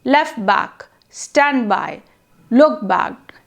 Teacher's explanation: In each case, the last phoneme of the first word is lost. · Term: elision